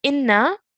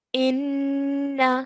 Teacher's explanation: we have to hold that nasal sound of the noon for two counts so rather than saying inna we're going to say in like